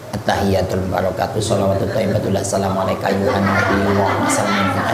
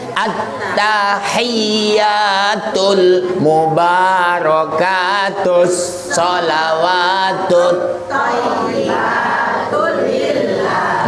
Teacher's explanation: At-tahiyyat biasanya pada ya tasdidnya kurang.